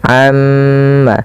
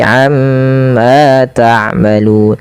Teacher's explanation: Kemudian pada lafal amma ta'malun, tahan pada bunyi ma, amma, karena pada lafal tersebut ada yang dinamakan dengan bacaan gunnah, itu cara membacanya nya ditahan, amma, jangan langsung amma, tapi amma ta'malun.